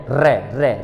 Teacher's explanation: बोलो तो जीभ लपेटे मार रही है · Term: लुंठित